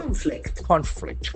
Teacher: There are two syllables, conflict. And accent falls on the first syllable.